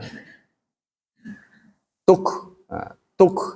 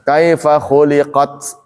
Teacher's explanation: aliran udara pada nafas setelah suara tertahan pada makhraj saat menuturkan huruf syiddah dan juga hamas, yaitu pada huruf kaf dan ta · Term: syiddah dan hamas